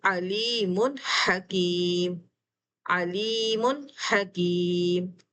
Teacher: तो यहाँ पर लेटर हा आ रहा है, तो मैं इसको पढ़ूँगी अलीमुन हकीम, अलीमुन हकीम। कोई गुन्ना नहीं किया, कोई नून को स्किप नहीं किया, बल्कि मैंने नून को बड़ा साफ ज़ाहिर करके पढ़ा। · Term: इज़हार